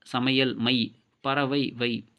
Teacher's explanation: ஐகார சொல் முதலில் வரும்பொழுது 1.5 மாத்திரை அளவில் ஒலிக்கும். ஐகார சொல்லின் இடையிலும் இறுதியிலும் வரும்பொழுது 1 மாத்திரை அளவில் ஒலிக்கும் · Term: ஐகார குறுக்கம்